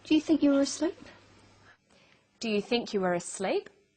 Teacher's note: Her voice goes up at the end of the sentence. We call this a rising tone.